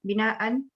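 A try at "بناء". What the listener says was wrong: Binaan inun buang, jangan bunyi ujung.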